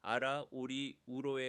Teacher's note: 종성에서 안정되면 RR, 아라처럼 첫 음절은 무음으로 혀만 올리고 두 번째 음절에서만 소리를 내게 하여 초성을 유도합니다. 모음 사이 탄설음은 혀를 더 빨리 톡 튕기기를 강조하면서